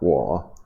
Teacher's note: it starts really low in terms of pitch. It dips down further to kind of really low pitch, and then comes back up again a little bit. So it ends up sounding like wa. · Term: third tone